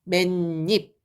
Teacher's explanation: 여기 빈자리에 음가 없는 빈자리에 니은이 생긴 거예요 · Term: 니은 첨가